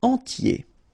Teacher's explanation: So remember, I-E-R, yé, okay, and then the T, tier, and the nasal before, en, entier.